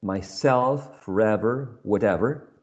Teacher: the second element of this compound is the one stressed in this case